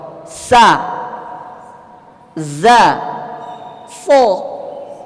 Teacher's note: Za, sa, satu makhraj. Ujung lidah dengan antara gigi atas dan bawah.